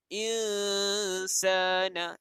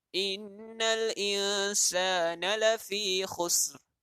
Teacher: Jadi kita tak bunyikan nun dan kita bunyikan dengung. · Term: dengung ikhfa